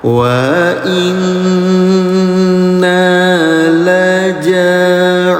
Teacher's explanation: Nun dalam keadaan tasdid namanya guna, dengungkan, jangan lupa bunda selama 2 harokat.